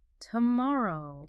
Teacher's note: But the main phonetic challenge here is mastering the rhythm of the longer word tomorrow. The syllable stress is absolutely critical. It's on the second syllable.